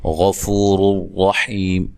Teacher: غین کو موٹا ادا کرنا ہے، فو و مدہ ہے۔ را کو موٹا ادا کریں گے، دونوں راؤں کو، ٹھیک ہے، یہ پیش کی وجہ سے اور یہ زبر کی وجہ سے۔